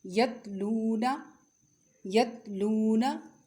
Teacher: تا کی آواز باریک اور بغیر جھٹکے والی ہوتی ہے